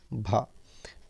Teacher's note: हिंदी की स्पर्श घोष महाप्राण और ओष्ठ व्यंजन ध्वनि है